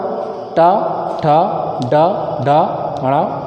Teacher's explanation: इनका उच्चारण मूर्धा से होने के नाते ये मूर्धन्य वर्ण है